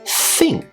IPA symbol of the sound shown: θ